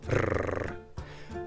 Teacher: Danish preserved a trilled Norse rrr.